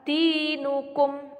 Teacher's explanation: huruf yang berharokat kasroh diikuti dengan ya sukun disebut dengan mad tabi'i, maka membacanya 1 alif atau 2 harokat